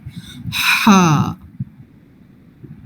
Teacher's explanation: تھوڑی سی سانس کی آواز پہلے آئے گی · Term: جیم والا